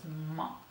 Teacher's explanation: we have the labial nasal sound, which is ma